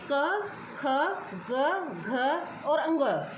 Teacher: इन पांचों व्यंजनों का उच्चारण कंठ के द्वारा होता है, यानी इनका उच्चारण स्थान एक ही है, इसीलिए इनको एक लाइन में रखा गया है। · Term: क वर्ग